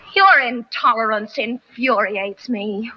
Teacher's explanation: she uses that linking R to link your to intolerance because that R is followed by a vowel sound